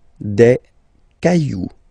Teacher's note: remember, you don't pronounce it, the final X